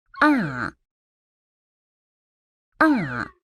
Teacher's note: That is the sound for the fourth tone. It starts high and drops all the way down.